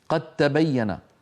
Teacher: قد تبين الرشد من الغي، أصلها قد تبين، قد بدال، تبين بتاء، والدال والتاء من المخرج نفسه، وسكن الأول، فهنا يحدث الإدغام